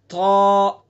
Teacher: طا کا مخرج وہی ہے جو تا دال تا کا ہے. بس اس حرف کو پر کر کے پڑھنا ہے